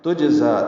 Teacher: تجزا تا کو جیم سے ملانا ہے، جیم ساکن پہ قلقلہ ہے